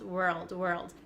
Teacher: were first and then to get the L Sound were old maybe you can add an almost like an a sound like saying the word all all were old world world and try to get it faster